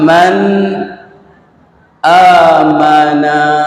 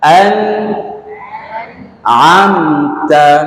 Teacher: nun mati berjumpa dengan ain nun mati berjumpa dengan hamzah tidak boleh dengung macam mana jelas tu jelas nun tetapi kita menjelaskan nun tu masih mengekalkan sifat ghunnah nun sifat nun tu ada ghunnah sifat sifat semula jadi dia. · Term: izhar